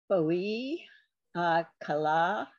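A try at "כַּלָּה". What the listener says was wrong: So that's a ha. There's no dot in that. You see it? It's chala, not kala. Sometimes it's kala, like in line 2, it's kala. Line 6, it's chala.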